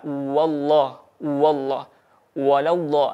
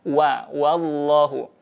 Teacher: Maka tebalkan setebal mungkin huruf lamnya, namun huruf wawunya tidak terbawa tebal. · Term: dibaca tebal